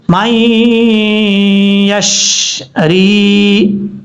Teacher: اور یہاں پر نون ساکن ہے، نون ساکن کے بعد یا آ رہا ہے حروف جار مرون میں سے، تو یہاں پہ نون ساکن کا اخفا ہوگا، ایک الف کی مقدار غنہ کر کے پڑھیں گے